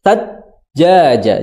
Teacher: di situ jimnya ada tasydid, ditahan dulu atau dikasih jeda.